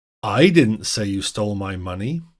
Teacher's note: we stressed the first word I